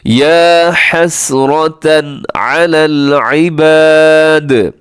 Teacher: تنوین کے بعد یہاں پر حروف حلقی میں سے عین آگے ہے تو یہاں پر آپ نے اظہار کرنا ہے، یعنی تیزی سے پڑھ دینا ہے